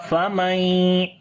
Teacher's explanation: Aw rahimana famay. After the noon sakin there is ya, we make idgham with gunna.